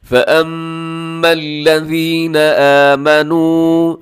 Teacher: پھر آگے دیکھیے گا فَأَمَّا الَّذِينَ آمَنُوا، فَأَمَّا یہاں میم مشدد ہے، آپ نے غنہ کرنا ہے